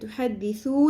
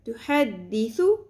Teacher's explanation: سا کو لمبا نہیں کرنا، تحدثو نہیں پڑھنا